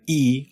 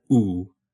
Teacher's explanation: Again, E, unrounded, and oo, rounded.